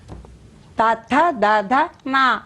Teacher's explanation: ಅಂಗಲಿನ ಸಹಾಯ ತಗೊಂಡ್ರೆ ಟ ಠ ಡ ಡ ಣ ಅಂತ ಹೇಳ್ತಾರೆ ಅದೇ ಹಲ್ಲಿನ ಸಹಾಯದಿಂದ ನಾಲಿಗೆ ಹಲ್ಲಿಗೆ ತಗಲಿದಾಗ ಅದೇ ಒಂದು ಧ್ವನಿ